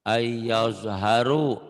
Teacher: bukan ayas haru, bukan s tapi zo ayaz zo zho, lebih dekat ke z daripada ke s, tapi z-nya zho ayaz haru.